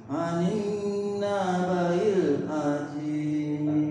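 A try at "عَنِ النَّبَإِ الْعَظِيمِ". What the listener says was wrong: Maknya jangan dipanjangin. Anin. Dia bukan dipanjangkan, tapi ditahan, digunah. Anin naba'il azim.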